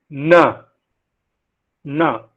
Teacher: So na is a voiced, alveolar, nasal.